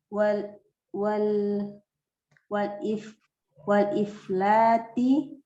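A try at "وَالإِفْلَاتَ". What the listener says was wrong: Ini bukan jama' muannas. Aflata yuflitu iflat, bukan jama' muannas ini. Iflata.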